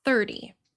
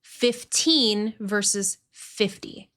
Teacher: Now, in American English, when you have that T between two vowel sounds, or in this case, two voiced sounds, the in the R is voiced, and the Y after the T functions as a vowel, E in this context. The T in that situation is reduced and it becomes very soft, almost like a quick D sound, but not exactly the same. Really, this sound is called a tap or a flap, and this is super essential for American English.